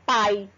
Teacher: um exemplo aqui de som oral na palavra pai, sai apenas pela boca